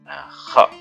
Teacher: Kemudian selanjutnya, tenggorokan bagian atas hurufnya ghain dan kha. Jadi kalau kita bilang kha itu di ujung sini ya, di atas tenggorokan bagian atas sendiri, itu tempat keluarnya kha.